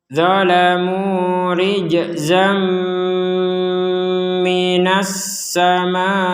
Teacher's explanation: Kalau dilanjutkan dilihat dulu huruf apa setelahnya, ditanya huruf mim, maka kita masukkan tanwin atau fathatain ini ke huruf mim disertai dengungan.